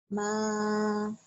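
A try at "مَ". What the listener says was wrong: Kepanjangan.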